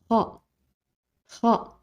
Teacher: c'est comme le G en espagnol il vient du haut de la gorge